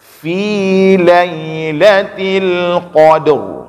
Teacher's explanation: Caranya adalah yang pertama baca qaf dengan tebal dulu. Yang kedua huruf dal ini huruf tipis